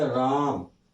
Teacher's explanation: यहाँ रा का उच्चारण लंबा है इसलिए ये रा जो है ये प्लुत स्वर है